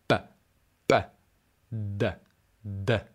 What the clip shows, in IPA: p p d d